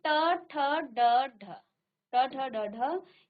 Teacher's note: ट, ठ, ड, ढ ये आपकी मूर्धन्य ध्वनियां हैं।